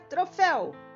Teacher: Oxítona, última sílaba tônica da palavra troféu